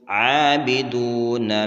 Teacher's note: عین کے اوپر کھڑا زبر ہے، 1 الف کی مقدار اس کو کھینچیں گے، واو مدہ ہے، اس کو بھی 1 الف کی مقدار کھینچ کر پڑھیں گے۔